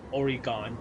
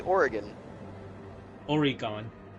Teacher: she puts the emphasis on the last syllable